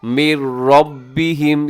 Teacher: یہاں نون ساکن کے بعد را ہے تو یہاں بھی ادغام ہو رہا ہے بغیر غننے کے۔ من ربہم، را کے اوپر حرکت ہے تو را موٹی پڑی جائے گی، اور آگے رموز اوقاف میں سے جیم ہے، اب یہاں وقف کر دیجیے گا، سانس توڑ دیجیے گا۔